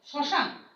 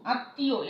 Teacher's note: ম যখন অনুচ্চারিত থাকে তখন কিন্তু সেই শব্দটির উচ্চারণ সানুনাসিক হয়